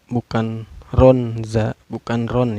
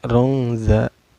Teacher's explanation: Cara bacanya disamarkan ya, samar sambil dengung. Rongza bukan ronza, bukan ron ya, tapi rongza itu. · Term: ikhfa